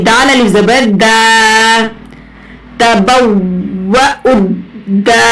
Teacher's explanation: دال کو الف سے ملائیں گے اور یہ 2 حرکت کھینچ کر پڑھیں گے